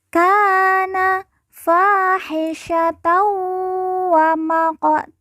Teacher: Tan di ujung karena waqaf atau berhenti kita baca ta dan dibaca panjang dua harakat